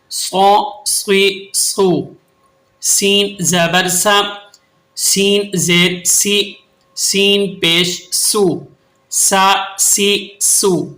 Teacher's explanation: یہ تین حروف جو ایک ہی مخرج سے ادا ہوتے ہیں انہیں حروف صفیریہ کہتے ہیں، کیونکہ ان کی ادائیگی کے وقت سیٹی جیسی آواز پیدا ہوتی ہے